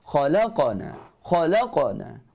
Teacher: Bunyinya ke dalam. Tebal. Pangkal lidah terangkat. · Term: Qalqalah sughra